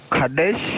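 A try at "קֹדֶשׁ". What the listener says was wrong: Except it's a cholam on the top of the kuf, makes the ko. Kodesh.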